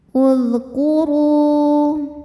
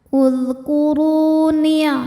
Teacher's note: Ru dihukumi dengan mad tabi'i dhahiri. Sebab ada waw sukun yang sebelumnya diharokati harokat dhammah, maka huruf ra panjang 2 harokat.